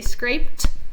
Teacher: I just add the d, but it does have a t sound.